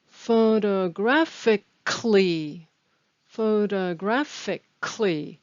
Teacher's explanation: notice that the stress is on grad